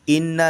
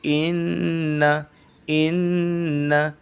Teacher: نون پر تشدید ہے تو اس لیے یہاں پر ناک میں چھپائیں گے